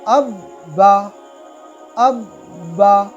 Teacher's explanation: तो तशदीद बा के ऊपर है तो बा 2 बार पढ़ा जा रहा और इसमें कुछ सख्ती भी हमें महसूस होती है